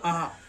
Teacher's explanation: विसर्ग का उच्चारण ह की तरह होता है।